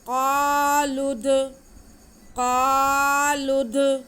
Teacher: तो हम लाम का पेश दाल के साथ मिला के पढ़ेंगे और दाल पे क़लक़ला करेंगे।